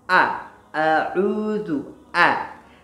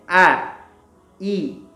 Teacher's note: A dibaca dengan tipis, ya. Suaranya ke samping, ya. Kemudian menurun.